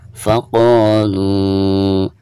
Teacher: Faqo dibaca 2 harokat karena dihukumi mad tabi'i. Ada harakat fathah lalu berhadapan dengan alif ya.